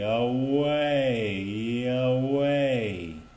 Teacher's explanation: let's slow down that transition from A to E